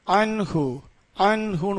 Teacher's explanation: வந்திருக்குது அப்ப இந்த நூன் சத்தத்தை நல்லா தெளிவா ஓதணும் அன்ஹு அன்ஹுன்னு ஓதணும் ங் சத்தம் கொடுக்காமல் நூன் சத்தத்தை தெளிவாக ஓத வேண்டும் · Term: இல்ஹார் சட்டம்